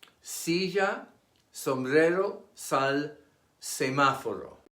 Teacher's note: It is pronounced like the S in saint and never voiced like the S in easy. In some regions of Spain and Latin America, however, the final S is aspirated or even dropped altogether.